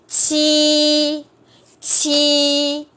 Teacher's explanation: Chúng ta đọc bằng đầu lưỡi mà còn phải đẩy ra hơi ra ngoài. Lưỡi chúng ta thẳng ha. Lưỡi thẳng và đẩy hơi ra. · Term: bật hơi